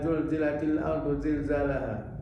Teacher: tahunya safir itu di Shad saja Za pun punya safir tapi safirnya Za itu di umpamakan dimiripkan dengan suara kawanan lebah